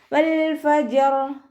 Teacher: മേലെ മുൻപല്ലിൻ്റെ അറ്റം താഴെ ചുണ്ടിൻ്റെ ഉൾവശത്ത് നനഞ്ഞ ഭാഗത്ത് കൊണ്ടുപോയിട്ട് വെച്ചിട്ട് ഉച്ചരിക്കുക